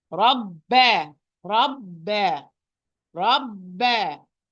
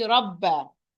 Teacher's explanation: the first one with the sukun, it's tight. The باء, it's حرف شديد, but still it has its time. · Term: باء with shadda